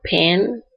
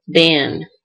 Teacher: pa is voiceless and ba is voiced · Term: voicing